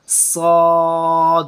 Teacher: ज़ुबान की टो और नीचे वाले दांतों के अंदरूनी जड़ों के साथ साद, ज़ुबान और दांतों की जड़ों दोनों का आपस में मीटअप होगा, देन जो है ये इसकी आवाज़, इस मखरज इसकी आवाज़ निकलेगी साद, और मुंह को खोल देंगे और भरे हुए मुंह के साथ हवा के अंदर से ऐसे आवाज़ आएगी साद। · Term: मोटे हरूफ